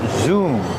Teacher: the verb zoom with a double O pronounced with a long ooh sound like room and moon